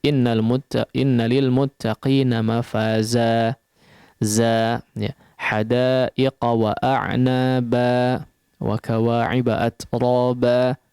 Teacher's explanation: Khusus fathatain dalam kondisi waqaf, maka dia akan dibaca sepanjang 2 harakat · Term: mad iwad